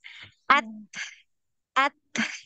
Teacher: untuk huruf ta ini tidak ada aliran suara, dia tertahan aliran suaranya, ya. Dia yang mengalir itu nafas. At, at. Jadi sama seperti huruf kaf tadi.